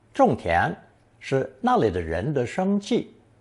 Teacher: fourth tone 种, meaning to plant or cultivate